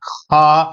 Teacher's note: کھا نہیں کہنا، خا حلق سے تھوڑا سا